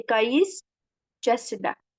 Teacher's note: Sait gəldiyi zaman tələzləməsi baş verərdi. Burda c samiti gəldiyindən t düşdü. · ST birləşməsində özündən sonra samit gəldiyi zaman t düşər. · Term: T-nın düşməsi